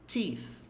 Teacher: ponta da língua entre os dentes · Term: som do TH